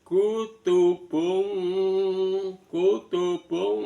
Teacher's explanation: Kutubung kutubung [Musik] itu ada domatain bertemu dengan qof. Maka ee bunyi n pada domatain di samarkan suaranya di tengah-tengah antara nun sama qof. Maka seolah-olah seperti bunyi ng dalam bahasa dalam huruf Indonesia.